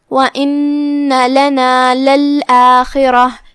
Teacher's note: نون پہ تشدید ہے، ہم تشدید کو ادا کریں گے لیکن ہم اپنی آواز لمبی نہیں کریں گے تاکہ نون کے بعد مد الف نہ ظاہر ہو.